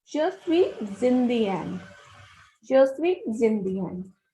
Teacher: If a word ends with a consonant and the next word is beginning with a vowel, the last consonant is S and the next consonant is I. So the sound of S is transferred to the sound of I. So it will be read as Je suis Zindian.